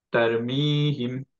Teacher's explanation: গুন্না ছাড়া আমরা জাস্ট নরমালি তারমিহিম এভাবে থেমে যাব